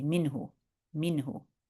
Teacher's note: we're not going to hide our noon. We'll say it very clearly and we won't stress there. We're just going to say minhu, minhu.